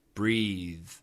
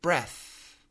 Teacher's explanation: Breathe has a vibrated TH. Breath has an aspirated TH. Lots of wind.